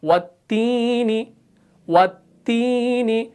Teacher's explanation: تو تا کو جب ہم نے پڑھا تو زبان کا بیچ والا حصہ اوپر تالوں سے نہیں ملا